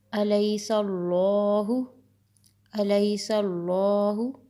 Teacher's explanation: اللہ کے ورڈ سے پہلے سین کے اوپر زبر ہے، ہم اس کو موٹا کر کے ادا کریں گے